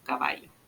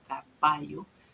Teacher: Es fricativa, ya no es oclusiva.